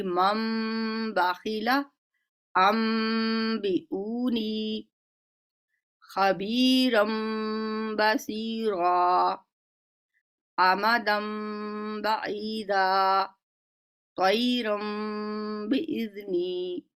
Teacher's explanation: اب میم کی آواز کو لمبا کریں گے 2 حرکت کے برابر، یہاں پہ ہونٹوں کو جوڑ کے رکھیں گے کچھ دیر کے لیے، اس کی ادائیگی ہوگی مم باخیلا ام بیونی خبیرم بصیرا آمدم بعیدا طیرم باذنی۔ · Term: اقلاب